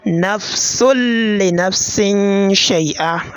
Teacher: The sound, that is, once you produce the sound of this nun sakina or tanween, so just know that the sound of this nun will disappear, or the sound of the tanween will disappear, as well as the nasalization. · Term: perfect assimilation